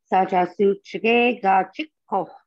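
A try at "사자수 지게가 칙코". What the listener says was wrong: Okay, so kind of the same thing is I didn't hear the H on the end.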